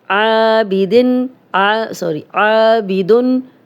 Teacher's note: عابدن، الف مدہ، 2 حرکات لمبا کریں گے